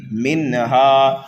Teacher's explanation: اخرج منها ماءها ومرعاها، اخرج، خا کو پر پڑھیں گے اس لیے کہ مستعلیہ میں سے ہے، را کے اوپر زبر ہے اس لیے را کو بھی پر پڑھیں گے، جلدی پڑھیں گے، جیم کو بھی جلدی پڑھیں گے۔ اخرج منها، نون ساکن کے بعد ہا حروف حلقی میں سے آنے کی وجہ سے یہاں پر اظہار ہو رہا ہے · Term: اظہار حلقی